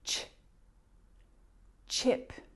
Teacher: that sound CH is a combination of the T and Sh remember that when you're looking for this symbol CH key voiced